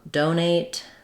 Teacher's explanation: First syllable stress on do, and then ate is short.